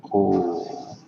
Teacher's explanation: In Georgian, it's truly just O. Nice straight sound all the way through.